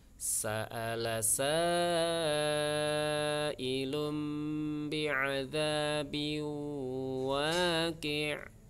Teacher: Sa'ala sa-nya panjang 4 harokat.